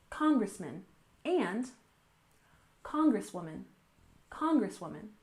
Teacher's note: We stress the first syllable in congressman, congressman, and congresswoman, congresswoman.